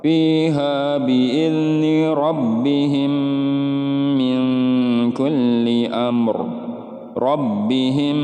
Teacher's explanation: huruf mim adegan ini namanya Idgham Mutamatsilain atau idgham mislain ya hurufnya sama mim bertemu dengan huruf mim cara membacanya adalah dengung dan ditahan 3-4 harokat